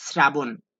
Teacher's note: শ্রাবণ শব্দের সঠিক উচ্চারণ তালব্য আছে, কিন্তু তালব্য থাকা সত্ত্বেও শ্রাবণের উচ্চারণ তালব্য দ্বারা হবে না, দন্তস্ব দ্বারা হবে